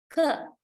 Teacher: This is voiceless velar stop. We don't produce voicing. Other than that, it is all the same with g sound.